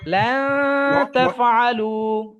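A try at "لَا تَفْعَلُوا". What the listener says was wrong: এটা তো এখানে নয়ের উচ্চারণটা হচ্ছে না আর কি, না উচ্চ থাকতেছে না, না নয়ের উচ্চারণই হচ্ছে না, কারণ আপনি যখন বলতেছেন না না তাফাল, মানে ও নয়ের উচ্চারণ হচ্ছে না, কি উচ্চ থাকতেছে, ভিতরে থাকতেছে।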